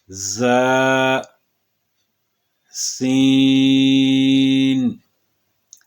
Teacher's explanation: باقی دونوں حروف ز اور سین یہ حروف مستفلہ ہیں، یعنی یہ باریک پڑھے جائیں گے